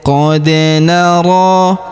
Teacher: Huruf ro kita panjangkan dua harakat karena terdapat alif kecil di atasnya dan terdapat alif bengkok atau alif maksurah di depannya. · Perhatikan huruf da berharokat sukun kita pantulkan atau kita qalqalahkan.